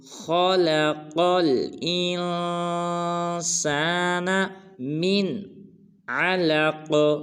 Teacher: خا کو پر ادا کریں گے، قاف کو بھی پر ادا کریں گے، پھر قاف کو آگے لام ساکن کے ساتھ ملائیں گے، جیسے خلق الانسان من علق۔